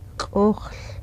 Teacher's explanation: We say it qokhl. You have all that hard glottalized sound in it, the underlined K, the underlined X, and the barred L sound.